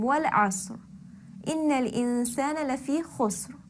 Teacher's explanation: both asr and khusr had a heavy ra because the sukoon preceding the ra sakin was preceded then by a fatha or a dhamma.